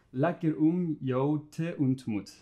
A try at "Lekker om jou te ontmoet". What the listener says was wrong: Perfect, yeah. So you can round your O's a little bit more.